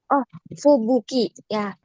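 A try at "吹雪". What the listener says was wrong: Oke, benar ya. Oji isang, tapi dibaca panjang ya, minasan.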